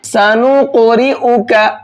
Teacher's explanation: قاف کو موٹا بھی کریں گے اور ساتھ ساتھ اس میں قلقلہ کریں گے